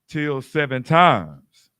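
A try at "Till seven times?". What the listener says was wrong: No, you gotta say when you read that, you gotta read it like a question mark. Like, so you're saying, then Peter came to him and said, Lord, how oft shall I forgive my brother? Shall my brother sin against me and I forgive him? Till 7 times?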